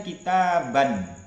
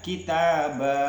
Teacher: ya pada akhir kata yang diwakafkan dibaca berhenti contoh kitaba ya maka tanwinnya itu diganti menjadi Mad Thai asalnya kan kitaban ya kemudian kitaba nah ini namanya Mad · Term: Mad iwab